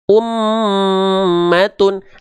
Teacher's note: Maka pastikan ketika melafalkan mim bertasydid itu dengung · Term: gunnah